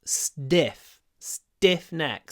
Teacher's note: Usually, obviously, t is pronounced with aspiration t, but after s it's not.